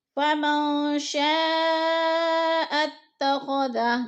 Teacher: شاء اتخذ، شاء پہ جو ہے مد ہو رہی ہے، مد متصل، حروف مدہ کے بعد حمزہ اسی کلمے میں ہے تو مد متصل یعنی 4 الفی مد ہے، ہم نے اس کو 4 حرکات کے برابر کھینچ کر پڑھنا ہے